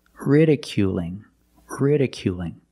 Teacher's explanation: It's a light L because it's between vowels.